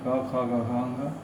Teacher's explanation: क वर्ग, क वर्ग में है क ख ग घ अंग, इसका उच्चारण होता है कंठ से